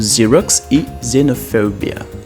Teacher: quando a gente vai pronunciar as palavras começam com x em inglês elas vão ter um som de z